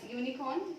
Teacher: The sound that comes out is of YU and not just U.